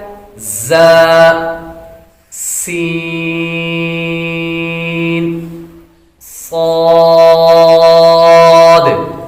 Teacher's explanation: 3 حروف ایسے ہیں جن کو ادا کرتے وقت سیٹی کی طرح آواز نکلتی ہے۔ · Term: سیٹی والے حروف